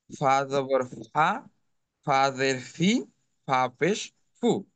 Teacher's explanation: নিচের ঠোট পেটের সামনের উপরের দুই দাঁতের আগার সঙ্গে লাগিয়ে উচ্চারণ করতে হবে